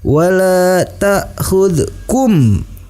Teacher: kum hukum bacaannya adalah ikhfa syafawi, dibaca dengan disertai dengung ke hidung.